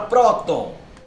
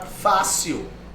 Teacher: a sílaba tônica é a penúltima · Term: paroxítona